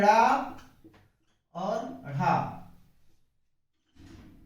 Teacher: इनके उच्चारण में जीवा मूर्धा से टकरा के और झटके से नीचे की ओर गिरती है। इनको हम उच्छिष्ट व्यंजन या द्विगुण व्यंजन कहते हैं।